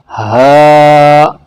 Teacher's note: کہاں سے نکلتا ہے؟ حلق کے بیچ سے نکلتا ہے